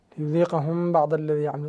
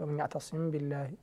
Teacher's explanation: الميم هنا قبل الباء حكمه الإخفاء